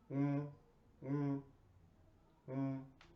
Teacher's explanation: this sound is mostly the sound is comes out from point from your nose you can pronounce this sound you can make this sound when your mouth is closed